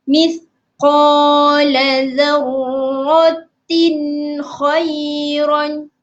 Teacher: Menjelaskan bunyi nun atau tanwin. Menjelaskan ya tuan-tuan dan perempuan, tak boleh dengung.